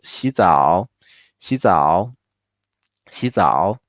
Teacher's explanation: Although 洗 is third tone, in order to make it sound more natural, we only keep the rising part, and then 早 keep the third tone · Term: two third tone together